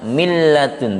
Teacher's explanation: Apabila nun sukun atau tanwin bertemu lam dan ro, maka dimasukkan tanpa dengungan, ya, tanpa dengungan. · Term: idgham bila gunnah